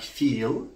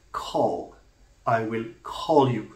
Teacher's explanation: When I have a word like call, I will call you. So here, the liquid L has acquired a coloring, a pharyngeal coloring, quote unquote, a back coloring by virtue of its occurrence after a back and a low vowel. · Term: dark L